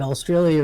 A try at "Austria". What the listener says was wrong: Austria. No, not Australia. Yeah, well, there's an A and an L before the last IA.